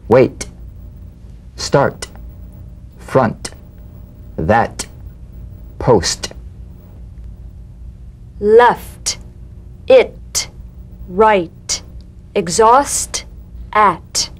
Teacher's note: unvoiced T tongue front palatal stop consonant cognate to the D the same staccato springing action as the D drum beat with no voice forms the light tap of the T feel a gentle pulsation in the tongue now tap the drum · the unvoiced T tongue front palatal stop consonant cognate to the D